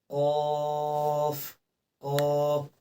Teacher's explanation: آپ دیکھ سکتے ہیں کہ ہماری زبان جو ہے اندر سے ہل رہی ہے، یعنی گلے کی جانب سے جو ہماری زبان ہے وہ حرکت کر رہی ہے